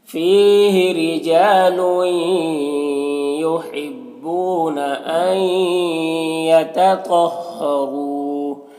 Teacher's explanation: تو حروف مستعلیہ میں سے پر پڑھیں گے، را کو پر پیش ہے، را کو پر پڑھیں گے. یہاں پر واو مدہ ہے، ایک الف کے برابر کھینچ کر پڑھیں گے · نون ساکن کے بعد یا ہے حروف یمن میں سے تو ادغام ناقص ہوگا، غنہ کے ساتھ پڑھیں گے